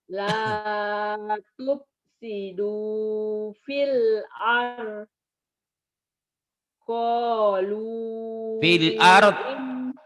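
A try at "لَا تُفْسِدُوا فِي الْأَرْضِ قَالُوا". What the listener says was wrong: Fil ardi kan itu waqaf la. La tufsidu fil ardi qalu. Gitu ya. Nggak boleh berhenti di waqaf la. Nggak boleh berhenti di lampu hijau. Adamul waqaf, terlarang berhenti. La tufsidu fil ardi qalu.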